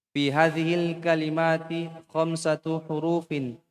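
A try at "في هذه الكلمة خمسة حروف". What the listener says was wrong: Kasih panjang, hurufin. Ya, ulang.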